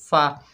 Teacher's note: ऊपर वाले दांतों के किनारे होंठ की नरम जगह जो होती है, होंठ का शकम होता है, वहाँ पर लगाए जाते हैं, तो फ़ा अदा होता है, फ़ा। लाम के ऊपर ज़बर है, आगे अलिफ खाली है, ये अलिफ मद्दा है, एक अलिफ की मिक़दार खींच कर पढ़ेंगे फला।